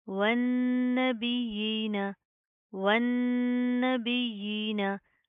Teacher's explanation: नून के ऊपर शाद है, गुन्ना करेंगे, ना के अंदर साउंड पैदा करेंगे। या के ऊपर शाद है, सख्ती से जमा कर पढ़ेंगे। खड़ी ज़ेर है, एक अलिफ के लिमिट के बराबर खींच कर पढ़ेंगे।